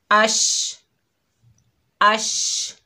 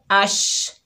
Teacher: हमारा ज़बान का दरमियानी हिस्सा ऊपर तालू से लग रहा है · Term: शीन